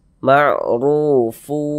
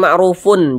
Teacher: dengan huruf wau hukumnya idgham bihunah maka cara membacanya bagaimana tadi dengan cara memasukkan bunyi tanwin ini kita masukkan ke huruf wau kita lebur ke huruf wau kemudian disertai dengan ghunah